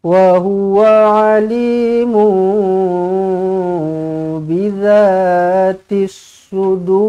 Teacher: Mim kecil, ekornya ke bawah, bertemu dengan ba di sini. Hukum dia adalah iklab. Dengungkan dua harukat.